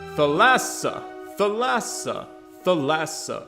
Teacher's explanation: either t or th but the middle syllable is accented not the first